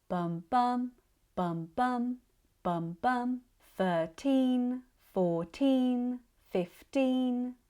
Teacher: Whereas the stress in 13, 14 15 is at the end. It's on the teen.